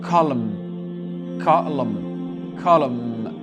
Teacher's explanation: Le N, on l'ignore et on prononce bien le M.